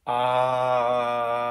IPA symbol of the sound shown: ɑ̟